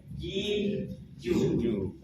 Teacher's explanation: Jim letak makhrajnya ada di tengah-tengah lidah bersama langit-langit.